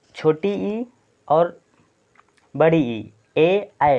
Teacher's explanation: अग्रस्वर कैसे पहचाने, जीभ के अगले भाग से जो उच्चारण है, तो छोटी ई और बड़ी ई, ए ऐ, तो ये आप बोल के अपने आप से बोल के देखिए, ये आपके जीभ के अगले भाग से उच्चारण हो रहा है।